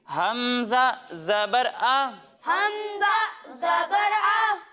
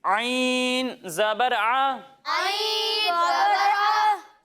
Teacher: جب ہم حمزہ کی ادائیگی کریں گے تو اس کی ادائیگی حلق کے نچلے حصے سے ہوگی، لیکن جب ہم عین کی ادائیگی کریں گے تو اس کی ادائیگی حلق کے درمیانے حصے سے ہوگی